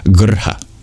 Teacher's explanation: That's why there are no vowels between the G, the R, and the H. So it's just a rolled R straight from the G into the H. Grha. Since R is considered a vowel in Sanskrit. · There's one more note, which is that the H in grha is voiced. In English, we don't normally voice our H's.